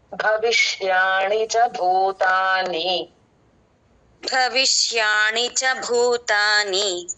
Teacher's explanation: ష అన్నది మూర్ధన్ షకారం